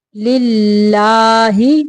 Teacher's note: یہاں پہ اللہ کا لام باریک پڑھنا ہے